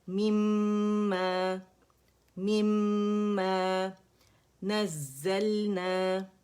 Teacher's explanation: buzzing sound والا زا ہے